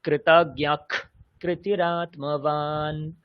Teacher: বিসর্গ আছে, তারপরে আবার ক আছে, তাহলে এই বিসর্গেরও খকারের মধ্যে উচ্চারণ হয়ে যাবে